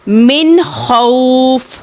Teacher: یہاں پر بھی نون ساکن کے بعد حروف ہلکی میں سے خ آ رہا ہے، تو آپ نے نون ساکن کو ظاہر کر کے پڑھنا ہے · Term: اظہار